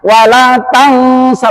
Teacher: Nun mati ketemu sin, ikhfa hakiki, itu disamarkan. Wala tangsa, bukan tangsa tapi tang, mirip-mirip engge.